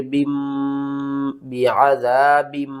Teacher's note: یہاں پر دیکھیں نون ساکن یا تنوین کے بعد اگلا حرف با ہوگا تو ہم نون کی آواز کو میم کی آواز میں بدل کر پڑھیں گے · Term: اقلاب